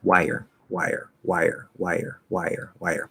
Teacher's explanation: we get a small Y because we're close enough to the Y that it creates the illusion that there's this little tiny Y there